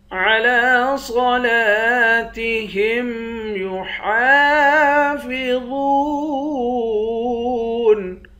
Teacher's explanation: حا کے بعد الف ہے، الف حروف مدہ ہے، ایک الف کے مقدار کھینچیں گے